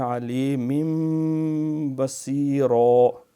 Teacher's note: تو پہلے یہ وجوہ اثیم یہاں پہ اظہار ہے اور اثیم علیم پہ بھی اظہار ہے، علیم بصیرہ یہاں انقلاب ہے، نون ساکن تنوین کے بعد با آ جائے تو اس کو میم کے ساتھ میں بدل کے پڑھتے ہیں